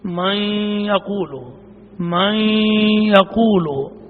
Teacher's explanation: اب نون مدغم ہوا ہے، نون کی صفت باقی ہے تو اس کو ادغام ناقص کہیں گے